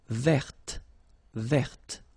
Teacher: So listen carefully. I don't say te, but it's t.